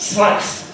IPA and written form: slaɪs (slice)